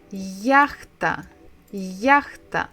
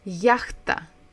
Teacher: So we stress the first syllable